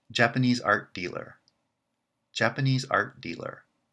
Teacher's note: dealer is not branching so it's the weak member of the larger compound and therefore the stress pattern would be japanese art dealer japanese